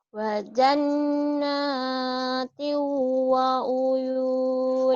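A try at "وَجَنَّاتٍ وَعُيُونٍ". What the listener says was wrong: Wahnya unya pendek. Wa uyun. Ayo lagi.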